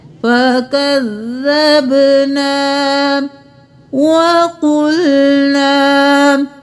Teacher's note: قاف موٹا الف مدہ ہے کھینچیں گے